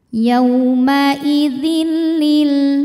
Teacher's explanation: Bil gunah karena ada tanwin kasrah menghadapi huruf lam cara bacanya tanwin lebur ke lam yaumaidzil tidak disertai dengungan Jadi cukup ditekan